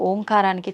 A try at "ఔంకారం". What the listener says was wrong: అది ఓంకారం కాదు, ఔంకారం. మనం పలకడమే దాన్ని తప్పు పలుకుతున్నాం. ఔం అని ఉచ్చరించినప్పుడు అకారము ఉకారము రెండూ పలకబడి ఓంకారం దీర్ఘమవుతుంది.